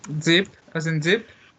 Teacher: We take the tip of the tongue towards the alveolar ridge